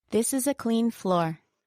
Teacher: she said it with a downward intonation on floor